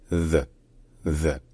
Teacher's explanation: Et c'est un mot qui a plusieurs prononciations possibles selon le contexte, mais avant tout, il faut commencer par expliquer le son the qu'il y a au début, le th. En fait, c'est un son qui est dental et qui se fait en faisant vibrer la langue contre les dents. Donc mettez votre langue soit juste derrière les dents, soit entre les dents, et faites vibrer.